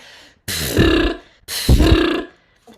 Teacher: I'm hearing air before tone.